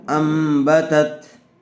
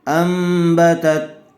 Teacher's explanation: میم زبر ام، با زبر با، امبا، تا زبر تت، انبتت، نون ساکن کے بعد با آ جائے تو اس کو میم سے بدل کر غنہ اور اخفا کے ساتھ پڑھیں گے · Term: اقلاب